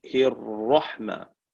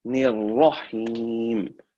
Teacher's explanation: Nir is empty, and ra is full mouth.